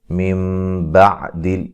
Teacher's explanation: نون ساکن کا اقلاب ہے، نون کو میم سے بدل کے پڑھیں گے